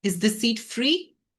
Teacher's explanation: So நம்ம ஒரு rising tone ஓட கேட்கிறோம்.